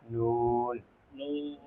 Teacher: 9 নম্বর মাখরাজ, 9 নম্বর মাখরাজ জিব্বার আগা, জিহ্বার আগা, তার বরাবর উপরে তালুর সঙ্গে লাগাইয়া